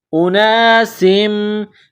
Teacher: دو زیر سم، اناسم، سین کو میم کے ساتھ ملانا ہے، میم مشدد ہے تو یہاں غنہ کریں گے، آواز ناک میں چھپائیں گے